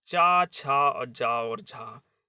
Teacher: ये हमारे चार वर्ण स्पर्श संघर्षी व्यंजन कहे जाते हैं।